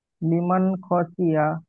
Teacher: নুন সাকিনের পরে হরুফে হালকির ছটি অক্ষর খ এসেছে, একে বিনা গুণায় জাহির করে পড়তে হবে